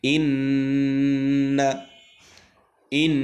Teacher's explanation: দেখুন আমি পড়ি ইন্না, ইন, এই যে ইন নাকের মধ্যে সাকিনটাকে নিয়ে পড়ছে, এটাই হচ্ছে গুন্না। · নুনে মিমে তাসদিদ থাকলে ওখানে একালিফ পরিমাণ টেনে নাকের মধ্যে গুনগুন করতে হবে বাঁশির মধ্যে।